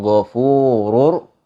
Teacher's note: Ghafurur, ro-nya itu dibaca tebal